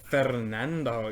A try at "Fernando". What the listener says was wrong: Horrible R rolling.